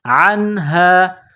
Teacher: حروف حلقی ہے تو یہاں غنہ نہیں کریں گے، آواز ناک میں نہیں چھپائیں گے. عین نون زبر عن، ہا الف زبر ہا، عنہا.